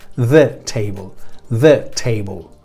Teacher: Bien, el caso es que en la primera palabra, the table, estoy pronunciando el de la forma que siempre lo hacemos, the, ¿vale? Fijaos que la TH no es una D en español, sino es una th, con la lengua entre los dientes.